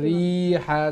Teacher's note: রিহা জেরর পরে ইয়া সাকিন হইলে লঙ্গ হয়